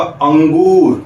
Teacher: लेकिन यदि मैं कहूंगा अंगूर, तो अब जो अ है ना, अ का उच्चारण करते समय या अंगूर का उच्चारण करते समय हवा जो है वो नाक से भी निकली, इसलिए अंग ये कहलाएगा अनुनासिक स्वर।